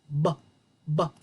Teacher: I cannot hold out the b sound. It's quick and clipped.